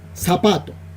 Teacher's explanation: la palabra zapato nosotros la pronunciamos con la s no la pronunciamos con la zeta